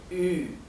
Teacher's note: U umlaut es algo intermedio entre una I y una U